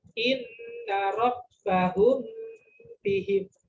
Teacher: dengungnya dua ketukan, dua harokat